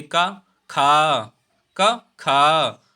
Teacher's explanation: का बोलने में हमें कम समय लगता है, यानी कम वायु निकलती है। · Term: अल्प प्राण